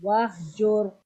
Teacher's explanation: را سے پہلے والے لفظ پہ کیونکہ پیش ہے تو اس کی وجہ سے را کو موٹا ادا کریں گے